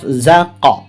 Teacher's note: Jangan sampai zak ya, ini huruf qalqala ya, dipantulkan maksudnya